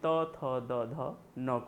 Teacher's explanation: दंत के नाम से क्यों जानते हैं, क्योंकि जो जिह्वा है वह जिह्वा जब ऊपर वाले दांतों से स्पर्श करती है तब वर्ण का उच्चारण होता है, तो उसे हम दंत के नाम से जानते हैं, यानी इसे हम त वर्ग को दंत के नाम से जानते हैं, जिसमें त थ द ध न को शामिल किया जाता है।